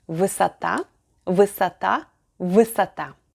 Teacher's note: This time we are adding 4 letters S, O, T, A. The stress is on the last syllable, so the unstressed letter O is pronounced as A.